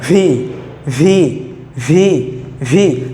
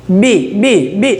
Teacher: ভি যখন বলব তখন মুখবর্তী বাতাস বের হবে। আর বি যখন বলব তখন মুখবর্তী বাতাস বের হবে না।